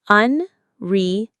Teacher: The main stress is on the third syllable, serve, unreservedly.